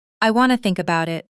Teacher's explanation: Take the phrase, I want to. In fast speech, this frequently becomes, I wanna.